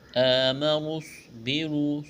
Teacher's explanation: ہے، یہاں نون کو صاد کے ساتھ ملانا ہے، آمنوا اصبروا، صاد کو موٹا کرنا ہے، سیٹی کی آواز پیدا کرنی ہے ، را کے اوپر پیش ہے، را کو موٹا کریں گے،